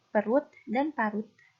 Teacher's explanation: pada fonem T, pada suku kata tertutup dibunyikan te, tak lepas.